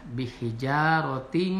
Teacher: Nah, ada kastan ada tanwin menghadapi mim, dibaca dengan masukkan tanwin kepada huruf mim dan memakai gunah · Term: idgham bigunah